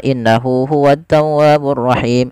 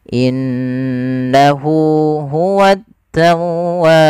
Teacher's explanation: pada lafal Nun berharakat tasdid ada bacaan gunah yang di mana suara nunnya wajib kita tahan kesalahan terjadi tidak menahannya contoh innahu hu tawwaburahim harusnya innahu huwaburahim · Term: gunnah